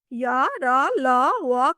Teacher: या र ल व का उच्चारण स्वर और व्यंजन के बीच की स्थिति में होता है, इसलिए इसे अर्ध स्वर कहते हैं।